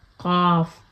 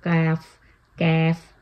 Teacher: قاف اور کاف دونوں ہی ڈیپسٹ پارٹ آف دا ٹنگ سے یعنی کہ اقصی اللسان سے ادا ہوتے ہیں